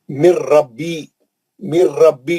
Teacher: गुन्ना नहीं करेंगे, नून पढ़ेंगे ही नहीं, सीधा लाम और रा में चले जाएंगे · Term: इदगाम बिला गुन्ना